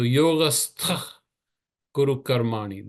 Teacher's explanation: And it would be very strange if I said yogastha kuru karmani. So the visarga sound converts into a sound that is called jihva muliya. It's the root of the tongue.